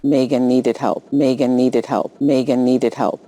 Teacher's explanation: she makes a small plosive release on the word help